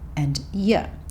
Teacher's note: These two words sounded like 'uh' and 'yuh', so with the schwa sound.